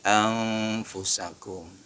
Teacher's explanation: Anfusakum nun mati bertemu fa, ikhfa hakiki juga.